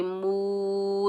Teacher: لا، میم کے اوپر پیش، آگے واو ساکن ہے، میم کو واو ساکن کے ساتھ ملائیں گے، یہ واو مدہ ہے، اس کو ہم ایک الف کی مقدار کھینچ کر ادا کریں گے۔